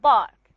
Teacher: When I say park and bark, you can actually feel the vibration when you say ba